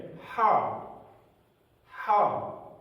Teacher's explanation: ان دونوں ہا میں ہمیں پڑھتے ہوئے فرق کرنا چاہیے، اور فرق یہ ہے کہ یہ ہا حلق سے ادا ہوتی ہے، حلق سے۔ اس ہا کی آواز ہمیشہ حلق سے آتی ہے